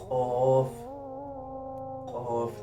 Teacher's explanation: जो कवे के पास है जिधर से जुबान उग रही है जुबान का जड़ जो कवे के पास है ये जब ऊपर तालू से लगे तो कफ अदा होता है